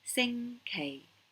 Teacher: Sing is the high falling, sing K. So it goes right from the top all the way down to the bottom.